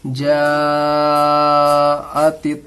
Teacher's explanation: حروف مدہ کے بعد حمزہ اسی کلمے میں ہے، مد متصل ہوگا، اس کو بھی 3 الف کے برابر کھینچیں گے۔